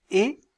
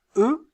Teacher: Quand je prononce E, mes lèvres sont étirées. Lorsque je prononce E, vous sentez qu'elles sont arrondies.